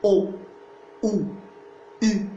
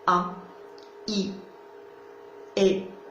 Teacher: Vous arrondissez les lèvres, n'est-ce pas? Mais quand vous dites A, I, E, là, vous n'êtes pas en train d'arrondir les lèvres. Au contraire, là, vous les étirez, vous les écartez, n'est-ce pas?